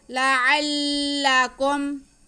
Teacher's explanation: ما فیہ لعلکم، لام پہ زبر، عین پہ زبر اور لام مشدد، عین کو ہم لام کے ساتھ ملا کے پڑھیں گے لیکن لام کو کھینچنا نہیں ہے۔ لعل، آگے کاف پہ پیش اور میم ساکن ہے، ان کو بھی نہیں کھینچنا۔ لعلکم ما فیہ لعلکم تتقون، تا پہلے تا پہ زبر اور دوسرے تا پہ شد، پہلے تا کا زبر ہم دوسرے تا کے ساتھ ملائیں گے اور پھر اس پہ زبر پڑھیں گے، کھینچنا نہیں ہے۔